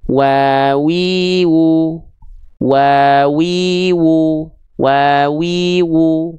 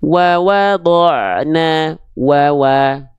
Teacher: Kedua bibirnya dengan posisi maju, seperti mengucapkan huruf u. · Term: huruf wawu